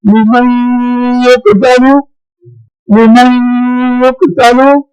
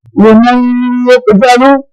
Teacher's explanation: مَعَ الصَّابِرِينَ وَلَا تَقُولُوا لِمَن يُقْتَلُ ادغام ناقص ہو رہا ہے نون ساکن کے آواز کے بعد یا آ گیا ہے اور یہ ادغام ناقص ہو رہا ہے